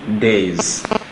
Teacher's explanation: when you have S forming a plural and coming after a voiced sound, that S usually changes to Z, the voiced counterpart of S. So what we have there is actually Z.